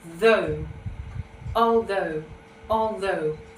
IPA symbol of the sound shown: ð